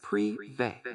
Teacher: It's pronounced privé, with the emphasis on the end and a slightly longer E sound.